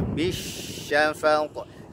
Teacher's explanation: Ingat huruf shin itu selain dia punya sifat rokhawah, suaranya mengalir ya, suaranya mengalir ketika kita ucapkan, dia juga punya sifat tafasyi, ada suara yang berhamburan ketika diucapkan itu ya. Bisyafaq, tak boleh dibaca bisyafaq, tertahan suara, tidak boleh.